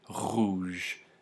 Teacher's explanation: You can hear that my voice box is vibrating as I make that, as I pronounce that word rouge. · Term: voiced uvular fricative